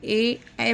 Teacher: ध्वनि जो है हमारे कंठ और तालु दोनों से टकरा कर बाहर आ रही है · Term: कंठ तालु